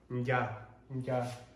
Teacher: we produce it at the front of our mouth and not the back of our mouth, yeah, the N needs to be pronounced as well.